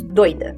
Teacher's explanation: Em Rio Preto dizemos doida, em que o primeiro e o segundo d consoantes oclusivas alveolares vozeadas.